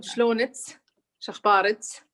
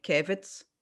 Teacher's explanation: all the ka sound pronounced as ta sound